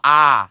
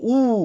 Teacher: যদিও এটা উচ্চারণের ক্লাসে আরও ডিটেলসে শিখবো, তারপরে হচ্ছে আমরা একটু দেখি ঠোঁটের উন্মুক্তি অর্থাৎ স্বরধ্বনি উচ্চারণ করতে গেলে ঠোঁট কোন কোন অবস্থানে থাকে। আমি যখন বলবো আ, তখন ঠোঁট হচ্ছে সবচেয়ে বড় অবস্থায় আছে, আর যখন আমি বলবো উ, তখন ঠোঁট সবচেয়ে ছোট কম অবস্থায় আছে